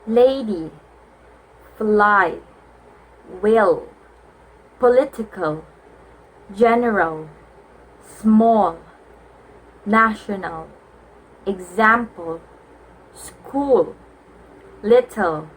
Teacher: Lateral approximant is a type of consonant sound which is produced by allowing the air to escape around the sides of the tongue rather than over the middle of the tongue